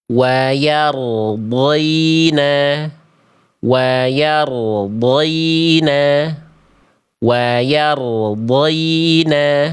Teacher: Ro sukunnya sebelumnya fathah dibaca tebal, getarannya tidak hilang dan jelas suaranya tidak terputus. · Ro tetap getarannya harus ada walaupun tidak berlebihan ya. · ro sukunnya dibaca terputus bunyinya. Ada jeda antara ro sukun dengan huruf dod. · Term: roh sukun